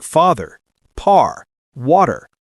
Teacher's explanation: we always pronounce the final R sound in words like father, par, water. British English often drops that R saying fa or wada. · We roll that R with the tongue curled slightly back.